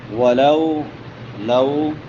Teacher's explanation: واولین ہے، اس کو نرمی سے پڑھیں گے اور ایک الف کے برابر لمبا بھی ہو جائے گا